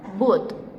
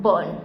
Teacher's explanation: These vowels are pronounced with the tongue close to the back of the mouth. For example, as in sound U in the word boot and as in sound O in the word bone. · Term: back vowels